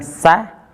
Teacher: ujung lidah ditempelkan ke gusi bawah bagian dalam.